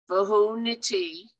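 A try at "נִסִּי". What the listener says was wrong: No, that is a samach. It is It looks like a tet, but it's a samach. Vahu nisi. Nisi.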